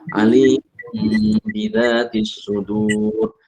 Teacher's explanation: karena mim dengan ba ini adalah huruf syafatain, maka pasti mengatupkan kedua bibir